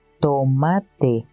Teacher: La tav es una parada alveolar sin voz. Eso significa que suena como la T en tomate.